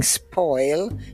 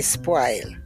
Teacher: we do not use the rounded vowels in Jamaica they're all broad a vowels